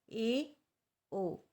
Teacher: अर्धसंवरित, half close. जिन स्वरों के उच्चारण में मुख द्वार आधा बंद रहता है